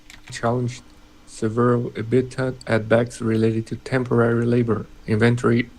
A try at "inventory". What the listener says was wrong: Inventory, I would stress inventory, the stress on the in, not on the ven. So instead of inventory.